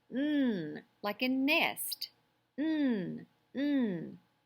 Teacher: Remember, it's a nasal. Your tongue's behind your teeth. It's voiced.